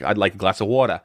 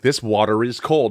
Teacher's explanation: I just said the r because the next word was is